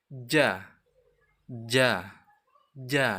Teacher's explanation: Tengah lidah dengan langit-langit atas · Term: huruf ja